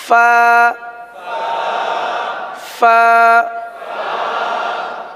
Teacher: یہ اوپر کے دانت اور نیچے کے ہونٹوں کا جو تر حصہ ہوتا ہے وہاں سے ادا ہوتے ہیں. جیسے کہ میں نے پہلے بتایا تھا کہ ہونٹوں کے دو حصے ہوتے ہیں، ایک جو باہر رہتا ہے وہ خشک رہتا ہے، وہ جو تھوڑا سا دانتوں کے ساتھ رہتا ہے یا بند ہو جاتا ہے وہ تر رہتا ہے.